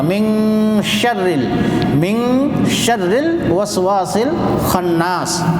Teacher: اخفا کی آواز جیسے پنکھا کہتے ہیں، پنکھا ناک میں جو آواز جاتی ہے اس جیسا ادا کرنا پڑے گا